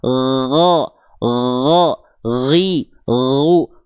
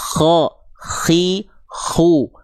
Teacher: huruf gin dan kho dilafalkan sama cuman bedanya gin enggak pakai nafas mengalir hanya suara saja. Go, gho ghi gu, kho itu tinggal melafazkan ghin tapi pakai nafas.